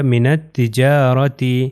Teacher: الف لام یہاں پر نہیں پڑھا جائے گا، نون جو ہے وہ تے سے مل جائے گا، ہو جائے گا من التجارۃ۔